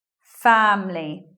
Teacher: sometimes you'll hear this way family just with two syllables elision of schwa after M means that we're not saying that